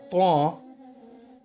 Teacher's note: almost like adding a w sound in the middle and saying twa without making your lips round for the w.